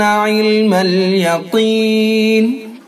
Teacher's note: قاف کو پر کر کے پڑھیں گے چونکہ حروف مستعلیہ میں سے ہے